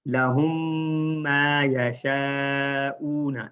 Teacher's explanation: لَهُم مَا، اب ڈبل میم اکثر لوگ اس کو لَهُم مَا يَشَاءُونَ ڈبل پڑھ رہے ہوتے ہیں تو یہ ایک ہی میم بن جاتی ہے، لیکن تھوڑی سی اسٹرانگ ساؤنڈ ہوتی ہے کیونکہ آگے شد ہے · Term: ادغام